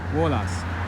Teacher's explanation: The stress falls on the second to last syllable